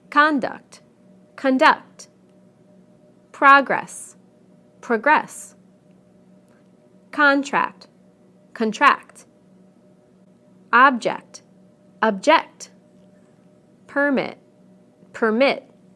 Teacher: again we stress the first syllable in the nouns and the second syllable in the verbs